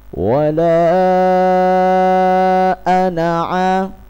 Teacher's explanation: Ketika kita membacanya dengan diwasolkan, dilanjut kepada kalimat setelahnya, lafadz ana dibaca pendek.